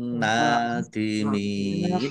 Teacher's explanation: Nun tasdid dibaca gunah atau mendengung. Ditahan biar tampak mendengungnya.